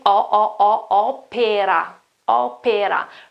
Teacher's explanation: Open O at the beginning